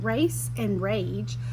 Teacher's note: So not only in race and rage is the E making that A say its long vowel sound, it's also softening the G and the C from K and G to S and J